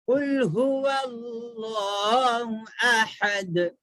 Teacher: چھوٹی ہاں نہیں ہے, بڑی ہا ہے, ہا حلق سے نکلتی ہا